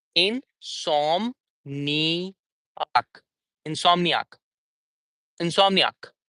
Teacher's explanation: we are not going to give stress on anything else but som.